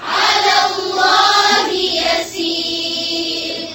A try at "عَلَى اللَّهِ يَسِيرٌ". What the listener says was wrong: علا کلام جو ہے اس کو موٹا نہیں کریں گے، اللہ کلام صرف موٹا کریں گے.